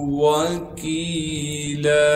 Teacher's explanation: کاف کے بعد یا مدہ ہونے کی وجہ سے کاف کو 1 الف کے مقدار کھینچیں گے